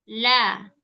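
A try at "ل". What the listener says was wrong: Ya, coba lamnya lebih tipis lagi. La. La. Nah, ini kan masih la. La. Nah, di akhirannya jangan disertai dengan pangkal lidah yang naik. Kalau pangkal lidahnya naik jadi la. A.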